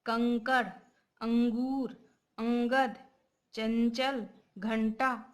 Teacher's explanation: इन शब्दों के उच्चारण में आप ध्वनि को नाक से बाहर आता महसूस करेंगे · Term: अनुस्वर